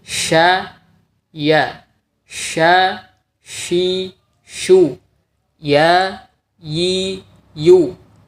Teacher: huruf shin dan ya, tengah lidah dan langit-langit di atasnya tidak begitu menempel